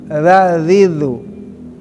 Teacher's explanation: ujung lidah tadi, ya, digigit, keluarkan lidahnya sedikit. Gigit dikit sama gigi.